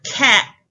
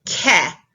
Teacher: they're showing final consonant deletion so instead of saying the word cat we get cat without the T